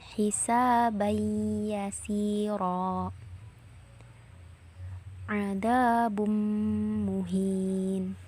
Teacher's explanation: Pada waktu mengidghamkan suara harus ditasydidkan kepada huruf idgham bigunnah yang ada di hadapan nun bersukun atau tanwin. Lalu ditahan kira-kira 2 ketukan seraya memakai gunnah ketika membacanya